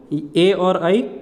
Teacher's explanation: ए और आई कंठ तालव्य से हो जाएगा, कंठ और तालु से